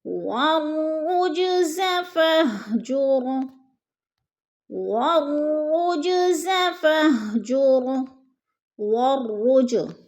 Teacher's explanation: والرج، جیم پر قلقلہ ہے، جیم ساکن ہے اور حروف قلقلہ میں سے ہے تو جیم کو ہلا کر پڑھنا ہے۔ فَاهْجُرْ، را پر پڑھا جائے گا، را ساکن ہے، اس سے پہلے لفظ کے اوپر پیش ہے تو را پر پڑھا جائے گا۔